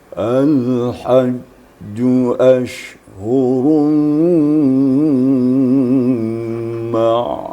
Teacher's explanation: Di ujung ditinggikan untuk mengantarkan kepada bayati suri.